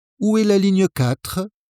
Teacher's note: since this is a question, let your intonation rise at the end